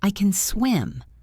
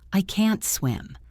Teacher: If you hear a short soft cen, it is positive. If you hear a long hard can't, it is negative.